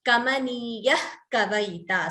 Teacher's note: Here visarga followed by ka, jihva muliya